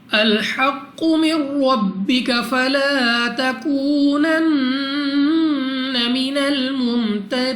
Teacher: قاف مستعلیہ میں سے ہے اور قلقلہ مشدد ہے۔ ایک تو موٹا پڑھیں گے منہ اور آواز کو کھول کر، دوسرا خوب جمعوں کے ساتھ ادا ہوگا۔